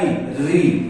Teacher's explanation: और मुर्दा री, री, जब आप री का उच्चारण करेंगे तो जीभ ऊपर झटके से ऊपर की तरफ दांतों से थोड़ा सा पहले टच होती है, इसीलिए इसे मुर्दा या मूर्धन्य स्वर कहते हैं।